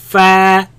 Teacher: Fa, use the teeth and the bottom lip.